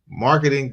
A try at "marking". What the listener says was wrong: Marking, not marketing. Marking.